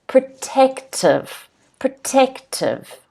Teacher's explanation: The stress is on the second syllable. As you can see with the phonetic spelling in blue, there's an apostrophe on the second syllable.